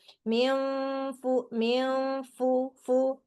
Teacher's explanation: gigi serinya nyentuh ke perut bibir bawah ya gitu, yang dalam itu. Mil fu mil fu fu gitu. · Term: fa